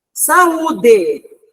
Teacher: Porque o U está sozinho na sílaba e ele é o tônico.